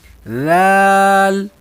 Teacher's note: اس میں ذال اس کے بعد باریک ہے، سا کی طرح زبان اس کی بھی باہر نکال کے رکھنی ہے، سا کی طرح زبان باہر نکالنی ہے اس کی، ذال اور ادا کرنا ہے، لیکن دبانا نہیں ہے زبان کو. ذال زبان اس کی آواز باریک ہے اور زبان باہر رکھ کے پڑھیں گے. آگے را، را اس کی آواز موٹی ہے، را اس کی آواز موٹی ہے.